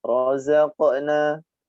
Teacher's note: Razaq ada huruf qalqalah, huruf qaf sukun, dibaca mantul kecil.